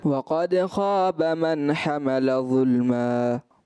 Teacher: دال کو جو ہے وہ پر پڑھ دیا، دال باریک پڑھنی تھی